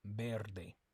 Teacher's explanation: the V makes like a b sound but it's a little bit softer than a normal B sound